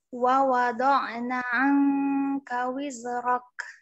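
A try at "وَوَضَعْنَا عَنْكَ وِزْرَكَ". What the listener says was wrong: Naknya panjangin dikit. Wa wada'na anka wizrak.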